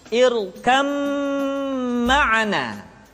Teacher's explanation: Disertai dengan gunah, ditahan, tidak boleh tergesa-gesa.